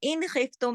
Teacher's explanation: नून के बाद हरफ हल्की है खा, तो पूरे इजहार के साथ आपने पढ़ा हुआ इन खिफ्तुम